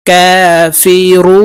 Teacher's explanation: রু এখানে 3 আলিফ টেনে নুনকে সাকিন করতে হবে, কারণ মদের হরফের বামের হরফে ওয়াকফ হইলে মধ্যে আরজি 3 আলিফ টানিয়া পড়িতে হয়।